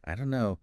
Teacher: the don't and no just merge